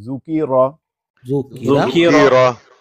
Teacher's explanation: اب اس ذکیرہ کے را پر زبر ہے، اس کو مفخم یعنی منہ بھر کے پڑھتے ہیں